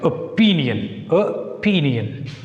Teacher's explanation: Put stress on P, not O. Opinion. Because O is a weak one.